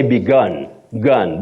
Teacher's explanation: The U takes the sound O, what we call the mid-central sound O.